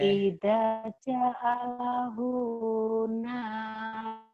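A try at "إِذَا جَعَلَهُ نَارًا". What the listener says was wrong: Bukan naro, Bu. Narong. Narong. Narong.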